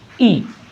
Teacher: उच्चारण में जीभ का अग्रभाग, अग्र का मतलब आगे का भाग, अग्र आगे का भाग काम करता है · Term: अग्रस्वर